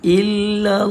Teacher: dibaca dengan tebal dan panjangnya sekadar dua harakat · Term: lafzul jalalah